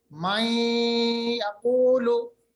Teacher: नून साकिन की आवाज को या में मिला दिया, तो नून और या दोनों की आवाज मिलेगी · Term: इदगाम